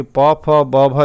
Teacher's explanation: और प वर्ग को ओष्ठीय व्यंजन कहते हैं, क्योंकि प, फ, ब, भ जब आप बोलते हैं तो हमारे दोनों ओठ क्या है, आपस में सटते हैं